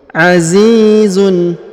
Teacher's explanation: Huruf zi dipanjangkan 2 harokat karena di depannya terdapat ia sukun.